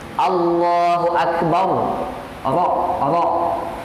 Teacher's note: Tetap walaupun ditebalkan bunyi getarannya ada gitu.